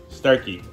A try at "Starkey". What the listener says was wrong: Starkey. Not starchy. It's starkey. Yeah, it's not. That's starkey. Like the Starkey building on Gay Street. There's also Starkey Elementary. no, it's Starkey.